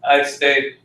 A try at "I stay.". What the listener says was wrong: Can you hear the question mark? Can you hear the question mark in it staying?